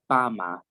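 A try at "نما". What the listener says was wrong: Oh, it's not a B, it's not a ba. What is this one? This is a noon, remember? A noon makes a na sound.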